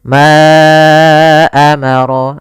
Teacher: kemudian Ma amarallahu Bih di sini ada Mad Jaiz munfasil yaitu Mad yang terjadi apabila ada huruf hamzah datang setelah huruf mad maka di sini panjang untuk Ma adalah 4 harakat atau 5 harakat